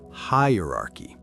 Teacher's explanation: Make sure the stress is on high.